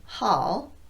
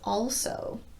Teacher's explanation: The dark L is made with the tip of the tongue low in the mouth. I mentioned in my previous video that many instructors teach the tongue position for this sound as a cupped shape, with the tongue resting on the floor of the mouth.